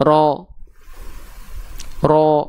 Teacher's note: ro itu ketika dia harus dibaca tafhim atau tebal lihat nah huruf ro itu pangkal lidahnya nih lidah terdalamnya naik ke arah langit-langit enggak nempel tapi naik